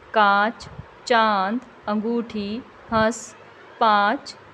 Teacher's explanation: इसका उच्चारण करते समय ध्वनि नाक और मुंह दोनों से निकलती है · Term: अनुनासिक